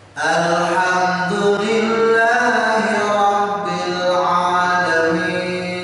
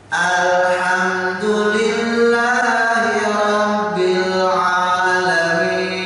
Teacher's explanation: Alif lam kalau mati itu tidak memantul dibacanya. Sering mendengar membacanya Alif Alhamdulillah ditahan lidahnya, jangan digerakkan.